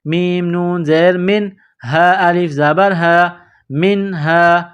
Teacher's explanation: نون زیر من، میم کو نون کے ساتھ پلس کرنا ہے، نون ساکن کے بعد ہا ہے، حروف حلقی ہے تو یہاں آواز ناک میں نہیں چھپانی ہے